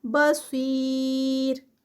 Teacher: صاد heavy اور اینڈ پہ را لائٹ ہوگا. را کا بھی یہ ہے کہ را کے اوپر جو ہے وہ ڈبل پیش ہے, لیکن اس سے پہلے دیکھیں تو یا جو ہے وہ یا آ رہی ہے, اور جب یا آتی ہے را سے پہلے تو یہ اس کا رول ہے کہ وہ را جو ہے وہ لائٹ پڑھی جاتی ہے.